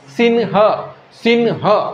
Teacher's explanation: आता तुम्ही सिंह म्हणता, पहा व्यवस्थित लक्षात घ्या, नाकातून त्याचा उच्चार होत आहे.